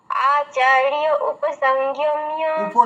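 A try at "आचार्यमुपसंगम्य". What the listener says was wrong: উপ নয় মুপ, ময় হস্য আছে।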